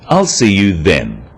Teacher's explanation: is now a definite commitment and an end to the arrangement notice how the stress is on the word then to confirm that the time is definite